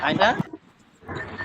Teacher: আইনটা গলার ভিতর থেকে। হ্যাঁ আইনা, আইনটা একটু বড়।